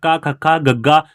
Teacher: ਜੀਭ ਦਾ ਪਿਛਲਾ ਹਿੱਸਾ ਕੋਮਲ ਤਾਲੂ ਨਾਲ ਲੱਗੇ ਉਹ ਕੰਠੀ ਵਿਅੰਜਨ ਹੁੰਦੇ ਹਨ